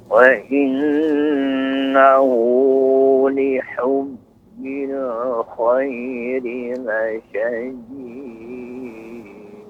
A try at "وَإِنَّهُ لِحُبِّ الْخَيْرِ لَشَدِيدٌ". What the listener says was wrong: Ya, Bapak, untuk pengucapan qalqalahnya lebih dijelaskan lagi. La syadid.